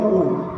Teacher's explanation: ओष्ठ, होठों की सहायता, होठों के माध्यम से ऊ को बोला जाता है, ऊ, जिसमें हमारे होठ कोल टाइप हो जाते हैं, ऊ।